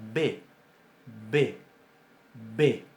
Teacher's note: Pero resulta que también nosotros tenemos una bilabial oclusiva sonora